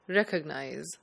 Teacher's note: the stress should be on the first syllable